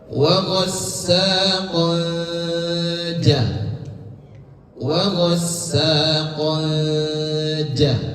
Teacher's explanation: Kalau huruf setelahnya adalah jim, maka samarnya mendekati huruf jim. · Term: Ikhfa